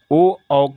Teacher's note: ओ औ का उच्चारण स्थान कंठ और ओष्ठ दोनों होता है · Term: कंठोष्